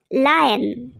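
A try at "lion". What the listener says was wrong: তোর উচ্চারণের ঢং দেখে মনে হচ্ছে লায়নের প্রচন্ড জ্বর হয়েছে, ও মাটির মধ্যে শুয়ে আছে। বলতে হবে এরম করে, লায়ন। মানে তোর বলার মধ্যে একটা গুরুগম্ভীর ভাব থাকবে, অত্যন্ত গভীরভাবে বলতে হবে, লায়ন।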